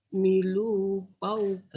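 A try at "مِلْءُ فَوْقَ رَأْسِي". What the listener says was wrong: Lu-nya pendek. Milu fauqorosi.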